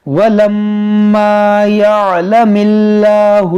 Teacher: جو اسم جلالت ہے اس کو ہم باریک پڑھیں گے کیونکہ یہاں پر زیر ہے